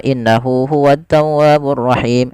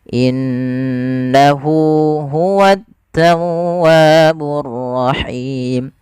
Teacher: nun berharakat tasydid bacaan ghunah yang di mana suara nunnya wajib kita tahan. Kesalahan terjadi tidak menahannya. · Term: gunnah